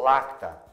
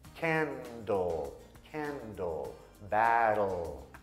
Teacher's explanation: Então, em vez de ser na parte de baixo, atrás do dente da frente, eu vou levantar a língua um pouquinho mais e eu vou colocar atrás daqueles dentes quase na altura da gengiva.